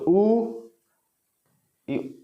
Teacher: तो ओ तो बोलेंगे तो ओठ गोलाकार होगा ना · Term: वृत्त मुखी